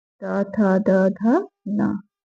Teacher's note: त वर्ग का उच्चारण स्थान दंत।